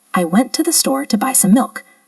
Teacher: Did you hear how I stressed store and milk, but the other words were quieter and faster? That's the natural rhythm of English.